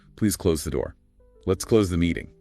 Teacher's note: often with more of a Z sound at the end. Rhymes with toes or nose.